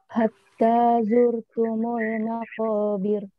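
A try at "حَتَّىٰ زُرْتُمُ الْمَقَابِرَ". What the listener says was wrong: Nah, itu harusnya seperti itu Bu ya. Bir langsung. Barusan kepanjangan bir ya.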